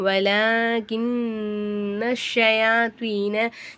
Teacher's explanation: கின்ன அப்படிங்கும்போது நூனை நல்லா நம்ம அழுத்தி உச்சரிக்கணும். ஏன்னா நூனுக்கு சத்து பெற்றிருக்கு.